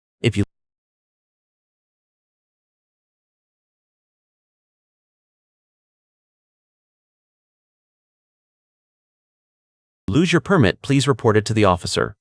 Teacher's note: Put a clear vocal stress on the verb report and make sure the T at the end of permit is crisp.